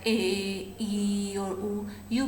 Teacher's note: are sonorants when you pronounce vowel sounds like a ye or you can feel that there is no obstruction in the passage of air